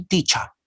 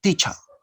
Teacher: Remember, in British accent, we don't pronounce, or British people don't pronounce the final er.